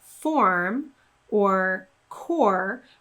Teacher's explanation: So in a word like form or core, we know that that OR is going to receive stress and we're going to pronounce it as OR with rounded lips